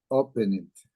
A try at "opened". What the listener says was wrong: Listen, you are telling me letter D, but you are pronouncing open it. No, sir. You are not opened.